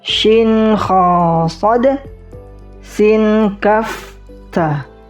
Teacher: Hams ada nafas atau angin ketika huruf ini diucapkan.